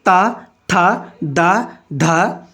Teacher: ता वर्ग दंत में आता है